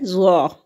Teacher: زبان کا سرا سامنے کے اوپر کے دو دانتوں کے کنارے سے مل کر جو ہے وہ ظا ادا ہوتا ہے